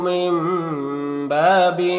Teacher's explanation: یہاں پر نون ساکن کے بعد با ہے تو نون کو اس میم سے بدل کر غنہ اور اخفاء کے ساتھ میں پڑھیں گے ، اس کو اقلاب کہتے ہیں، با میں الف مدہ ہے